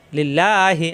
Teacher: লিম এলবে লামের সাথে লিল লাম খারা জবর লিল্লাহ হাজিরহি লিল্লাহি আল্লাহ শব্দের ডানে জের আসছে আল্লাহ শব্দ পাতলা হবে